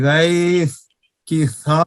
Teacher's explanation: استفعال کے معنی نیچے رہنا. اس کے ادا ہوتے وقت زبان اوپر نہیں اٹھتی بلکہ نیچے رہتی ہے. اسی وجہ سے یہ حروف باریک رہتے ہیں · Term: حروف مستفلہ